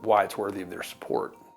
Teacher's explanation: doesn't say the full sounds of I in why. He speaks the first vowel, then lets it fade. He drops the second vowel of the diphthong, two vowel sounds that come together to make one vowel sound.